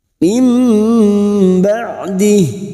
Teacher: iqlab membalik atau menukar bertemunya nun sukun atau tanwin dengan ba membalikkan Nun atau tanwin menjadi mim dengan merapatkan bibir tanpa menekan disertai mendengung selama dua atau tiga harakat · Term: bacaan iqlab